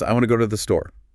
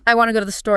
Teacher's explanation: You hear the stress on want, go, store. The little words to and there are almost unstressed, like background music.